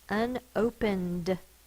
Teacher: If the consonant before the suffix ed is voiced, then this is going to be the voiced D sound. N is voiced, so D is going to be voiced.